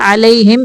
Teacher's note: علیہم پہ میم کو ظاہر کرنا ہے، اظہار شفوی کا قاعدہ ہے